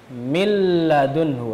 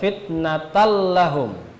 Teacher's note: memasukkan nun sukun atau tanwin ke dalam huruf yang berikutnya yaitu huruf lam atau rol tanpa disertai dengan dengung jadi hanya masuk saja tanpa demung itu idgham bila bila kuning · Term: bilagunnah